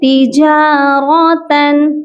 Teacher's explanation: اس کے بعد ہے تجارتن، را کو موٹا کر کے پڑھیں گے، اور تن، یہاں جو دو زبر ہیں یہاں پر غنہ نہیں ہوگا،